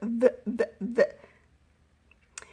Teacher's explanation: You will notice that I have the letter V, and in my class I use that picture vacuum. When you make the sound of V, you put your top teeth on top of your bottom lip.